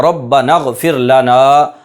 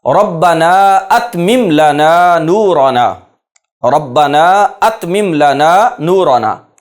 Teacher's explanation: اس میں غین سے پہلے حمزہ ہے لیکن اس حمزہ کا تلفظ نہیں کیا جائے گا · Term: حمزہ وصلیہ